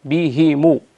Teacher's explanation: ليغيظ بهم بكسر الهاء وليس بضمها